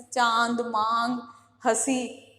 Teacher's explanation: अनुनासिक में जो वायु है वो मुख और नाक दोनों से निकलती है, और इसको किससे, चंद्र बिंदु से प्रदर्शित किया जाता है या व्यक्त किया जाता है।